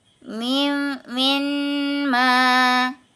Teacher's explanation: ketika huruf mim bertemu dengan huruf mim bergerak sehingga menghasilkan Idgham dan ghunah dengan ghunah sehingga kita dapat menghasilkan bacaan Idgham dengan berdengung kemudian